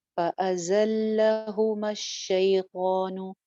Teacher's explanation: زا سیٹی کے ساتھ ہے اب. فأزلہما الشیطان، شی یا لین شیطان.